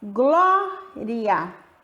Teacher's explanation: O I é a semivogal, que eu falo com menos intensidade. E o A, vogal, que eu falo com mais intensidade. O som sai mais aberto